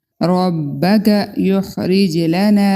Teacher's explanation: را کے نیچے زیر ہے اس لیے یہ باریک پڑھا جائے گا